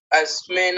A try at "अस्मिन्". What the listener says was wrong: यहां आपने न को पूरा कर दिया